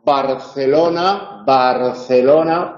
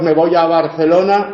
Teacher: Sin embargo, si la B está en posición inicial o la B va precedida de una nasal, ambos, Barcelona, Barcelona, Si decimos me voy a Barcelona, no es lo mismo que Barcelona. Cuando principia enunciado es oclusiva. Cuando va precedida y seguida de una vocal, entonces es aproximante.